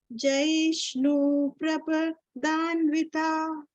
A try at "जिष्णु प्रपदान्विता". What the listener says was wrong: जैष्णु क्यों? अगर कोई कॉन्जंक्ट रहेगा ना, जैसे प्र, और इसके पहले शॉर्ट वावेल रहेगा, ये आप लिख लीजिए प्लीज।